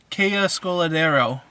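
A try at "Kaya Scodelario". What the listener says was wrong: You missed an I. There's an I in there.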